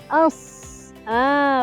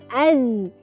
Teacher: kita turunkan hujung lidah bertemu dengan gigi seri bawah